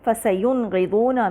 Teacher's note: یہاں پہ اکثر ہماری زبان اخفا کرنا چاہ رہی ہوتی ہے جبکہ یہاں اظہار ہوگا کیونکہ غین جو ہے حروف حلقی ہے